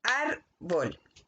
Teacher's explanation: La palabra se marca en la A de la primera sílaba y también se dibuja ahí la tilde. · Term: acento